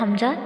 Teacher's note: حمزہ کی ادائیگی اقصی حلق سے ادا ہوتا ہے حمزہ، ٹھیک ہے، اور زیر کی ادائیگی جیسے بی کی آواز آتی ہے منہ کی سائڈ سے نکلے ہون کو پھیلا کے، بالکل ویسے ہی ای یا پھر آپ انگلش کا جو ای ہوتا ہے اس کی مثال لے سکتے ہیں، ٹھیک ہے، ای۔